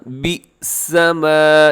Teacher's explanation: بی سما جھٹکے کے ساتھ کیونکہ با کے بعد حمزہ ہے